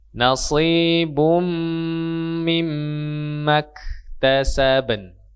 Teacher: Baru masuk ke n tadi ya, huruf nun mati. Nun sukun itu ujung lidah bertemu dengan langit-langit bagian depan ya. Hampir dekat dengan huruf ra dan lam ya.